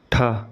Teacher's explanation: यह ट वर्ग का दूसरा महाप्राण वर्ण है।